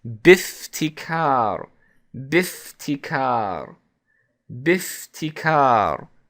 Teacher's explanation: because we connected the ba to the Hamzat al-Wasl, we would actually drop the Hamzat al-Wasl in terms of pronunciation.